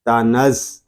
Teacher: تا زبر تا، نون زا زبر نز، تنز. زا زبر زا، نون کو ہم زا کے ساتھ ملا کر پڑھیں گے کیونکہ زا مشدد ہے